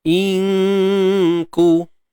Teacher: yang pertama nun mati bertemu kaf ni dengungnya nipis saja, ringan. Inku. Jangan sebut nun tepat pada makhrajnya. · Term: ikhfa